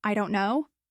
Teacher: Say it quickly with a rising tone at the end. I don't know. Now it sounds unsure, like you're asking for confirmation.